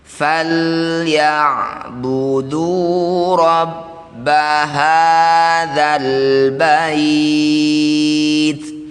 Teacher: Jadi sederhananya ain ini cara bacanya dialirkan tapi sedikit saja. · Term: tawasut